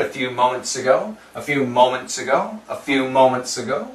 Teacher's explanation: the S can cancel the T